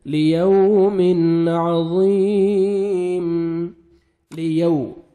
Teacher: वाव लीन है, नरमी से अदा करेंगे, वाव जज़म से पहले ज़बर है